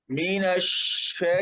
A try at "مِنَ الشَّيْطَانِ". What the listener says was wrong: आवाज आवाज दरमियान में बंद हो जाती है, इस बंद को खत्म करें, आवाज जारी रखे बिल्कुल. मिनश्शै, मिनश्शै जी.